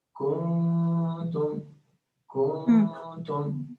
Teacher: There will be a wrong type of lengthening. It's not the vowel we are lengthening, is the nun that we are lengthening, making khfa, and also making it 2 counts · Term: ikhfa